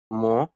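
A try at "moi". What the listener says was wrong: না, মো না, এটা আমি কিন্তু অনেকবার বলেছি যে ও এবং ই এই দুইটা লেটার থাকলে ওয়া কেমন উচ্চারণ হবে? ওয়া। মোয়া, মোয়া, তাই না?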